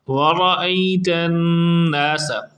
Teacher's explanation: را پر جب زبر ہو تو اس کو پر پڑھا جاتا ہے، یعنی تھک ساؤنڈ میں، بھاری آواز میں